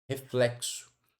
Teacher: essa letra X aqui, ó, ela tem som de KS